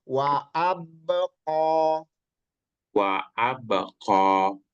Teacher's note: Nah qnya di lebih di dalam lagi ya